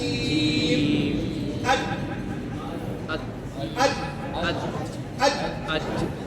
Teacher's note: जुबान का बीच जब तालु के बीच से लगे।